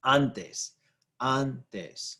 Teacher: Stress is on that first syllable, the second to last syllable. It ends in an S.